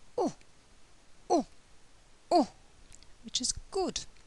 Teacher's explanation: The mouth is now moving to a half-closed position, what we call a half-closed position. The lips are rounded, but not as rounded as oo, and the tongue is at the back of the mouth.